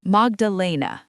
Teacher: The accent is on the third syllable.